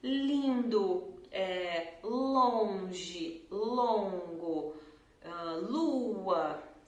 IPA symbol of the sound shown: l